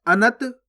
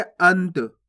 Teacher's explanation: अनत नहीं पढ़ना आपको, अगर आप अनत पढ़ोगे तो इस प्रकार से पूरा ना का उच्चारण हो जाएगा, जबकि अपन आधा ना पढ़ रहे हैं